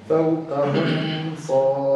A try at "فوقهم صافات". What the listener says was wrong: أظهر الميم. فوقهم صا. لا تقول فوقهم صا. إيش الإخفاء؟